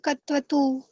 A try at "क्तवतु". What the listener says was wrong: कतवतु नहीं बोलना, पूरा क नहीं है।